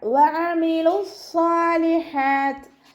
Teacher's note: വഅമിലു സ്വാലിഹാത്ത് വാവ് ഉച്ചരിക്കുമ്പോൾ ചുണ്ടുകളൊന്ന് സർക്കിൾ ചെയ്ത് കൊടുക്കുക. ഐനിൻ്റെ മഹ്റജ് എവിടെയാണ്? വസത്തുൽ ഹൽക്ക്, തൊണ്ടയുടെ മധ്യഭാഗം